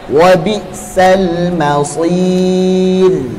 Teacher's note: Shadnya tebal dulu, baru ra-nya tipis ya.